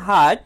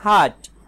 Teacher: হার্ট এখানে আ দীর্ঘ সময় উচ্চারণ হচ্ছে আর এখানে হার্ট অল্প সময় উচ্চারণ হচ্ছে